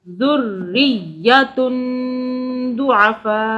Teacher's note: را کی اور یا کی 2 مرتبہ آواز بنے گی کیونکہ اس کے اوپر تشدید ہے. ایک را ساکن، دوسرا زیر کے ساتھ، ایک یا ساکن، دوسرا یا زبر کے ساتھ.